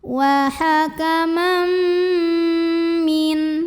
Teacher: tanwin fathahnya ini tidak dibaca n, melainkan m, langsung masuk ke mim. Hakamam masuk dan dengung. Artinya bunyi m-nya tahan dulu. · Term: idgham bi gunnah